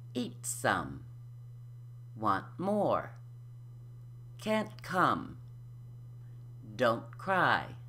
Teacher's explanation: you put your tongue tip on the alveolar ridge, just as in the aspirated T, like so. But you don't release any air. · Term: unaspirated T